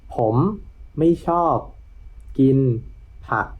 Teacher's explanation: So rising tone for ผ ม and then ไ ม ่ ช อ บ two falling tones in a row. Again is a flat tone, and then we end with a low tone.